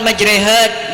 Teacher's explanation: Imalah yaitu membaca antara fathah dan kasrah